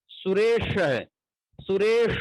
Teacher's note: यहाँ का जो स होता है उसमें जिह्वा को हम ऊपर स्पर्श कराते हैं, वो ताल से स्पर्श कराते हैं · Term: तालव्य स